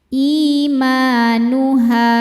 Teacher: Ma mad tobi'i dhahiri karena ada alif sebelumnya fathah, dibacanya panjang 2 harokat.